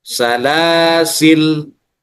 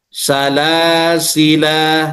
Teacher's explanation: Membuang alif artinya membaca sukun pada huruf lam yang kedua